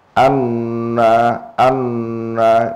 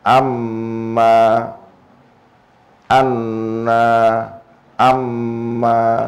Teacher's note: wal mimu lan mim wa nunu lan nun al musaddadatani kang ditasdidi karone iku suarane suara hidung